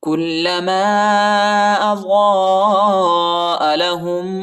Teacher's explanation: अलिफ के ऊपर ज़ाद के बाद जो अलिफ है इसके ऊपर बड़ा मद आया है, इसको तकरीबन 3-4 सेकंड तक खींचना है